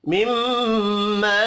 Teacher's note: مدہ کو ایک الف کے برابر کھینچ کر پڑھیں گے مما میم مشدد پر غنہ کرنا ہے